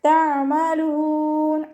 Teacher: തഅമലൂൻ അയിന് കൽക്കല ലെറ്റർ ഇല്ലാത്തത് കൊണ്ട് ഹാഫ് സുക്കൂന് കൊടുക്കുക. അയിനിൻ്റെ മഖ്റജ് നമുക്കറിയാലോ, വസത്തുൽ ഹൽക്ക്, തൊണ്ടയുടെ മധ്യഭാഗം, സൗണ്ടിനെ ഹംസയായി പോവാതെ ശ്രദ്ധിക്കുക. അവസാനത്തിൽ മദ് ആര് സുക്കൂനിൽ വഖഫ് ചെയ്യുമ്പോൾ 2, 4, 6 കൗണ്ട് വീതം നീട്ടി വഖഫ് ചെയ്യുക കേട്ടോ.